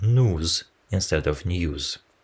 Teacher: the pronunciation of the sonorant y is omitted after the first consonant in words like news